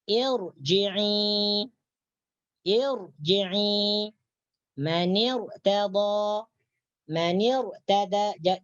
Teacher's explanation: apabila ada ra mati diawali oleh hamzah wasal, maka ra tersebut dibaca tebal atau tafkhim